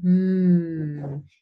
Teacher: when you place your hand on your larynx and you say hmm you will feel the buzzing sound and that's a voiced sound